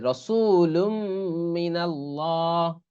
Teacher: তানভীনের পর যদি মিম আসে তখন কিরকম পড়তে হয় ইদগাম করে পড়তে হয়